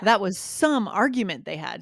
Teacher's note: And we really need to punch the some.